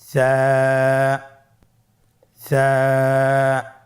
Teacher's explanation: কোন জায়গা থেকে স্ক্রিনে দেখা যাচ্ছে হারাফটির মাখরাজ হলো উচ্চারণ স্থান জিহ্বার আগা সামনের উপরের দুই দাঁতের আগার সঙ্গে লাগিয়ে উচ্চারিত হয়